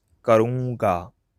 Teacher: When I'm using मैं, then there's a nasal sound when I say karunga.